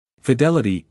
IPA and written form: fɪˈdɛlɪti (Fidelity)